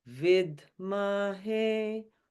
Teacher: Notice how we go up. Vidmahe, low, middle, high. Do you hear that?